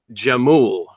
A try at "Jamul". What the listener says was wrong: No, it's pronounced Jamul with an H. It's Spanish. It's Spanish word. J is pronounced like an H, and I'm about 40 minutes from the Mexican border.